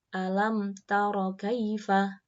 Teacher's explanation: bacaan izhar syafawi keterangannya sebab mim sukun bertemu dengan huruf tak dibaca terang di bibir dengan mulut tertutup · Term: idhar syafawi